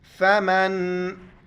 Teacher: नून जज़्म है, यहाँ पर इख्फ़ा करेंगे, नाक में आवाज़ छुपाएंगे